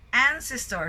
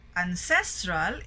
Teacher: Ancestor, so first syllable, but when we say ancestral, it's in the second syllable.